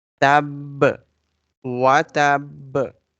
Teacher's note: Binwa, and there is stop sign on it, on this ba, and this ba is having shadda as well, so we will not say tab like we simply do. Because of shadda we will stress on this ba.